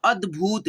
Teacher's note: और देखिए द ये आधा है, ठीक है, क्योंकि ये इसमें देखिए हलंत लगा हुआ है, तो हम लोग इसमें जो है ना जब उच्चारण करेंगे इसको द को, तो इसमें अ का साउंड नहीं निकलेगा। जैसे देखना यहाँ पे अद, अद, और जैसे यहीं पे पूरा द रहता तो हम लोग पढ़ते हैं द, ठीक है, अद, ठीक है, अद।